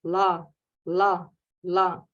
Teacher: А в тибетском ла очень-очень легкий звук, как будто мы говорим ля-ля-ля, вот язык там же находится, но при этом это не ля, это ла, такое ла, ла, ла.